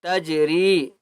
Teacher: جی میں یہاں پر قلقلہ کریں گے